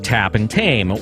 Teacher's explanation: In English, T usually denotes the voiceless alveolar plosive, as in the words tap and tame